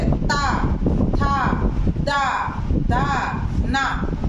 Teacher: कहां जीभ टच हो रही है? बोलते हुए हमारे दांतों से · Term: दंत्य